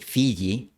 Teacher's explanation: la punta de la lengua está en los dientes inferiores y el medio de la lengua se acerca al paladar